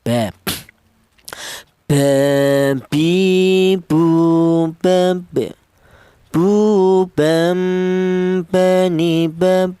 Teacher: untuk yang huruf ba dan huruf mim ini dihasilkan dari kedua bibir yang rapat. Kita bilang ma, kita bilang ba.